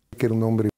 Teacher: la e de que se fusiona con la e de era.